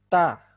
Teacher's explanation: ujung lidah bertemu dengan pangkal gigi seri bagian atas atau gusi gigi seri bagian atas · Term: makhroj huruf tah